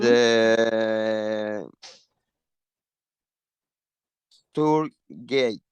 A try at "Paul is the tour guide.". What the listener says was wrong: No, gay. Es gay, es homosexual. No, you cannot say tour gay, right? Guide. Guide. This is like guide. Tour guide. So it's not tour gay, it's another occupation that's new. So tour guide.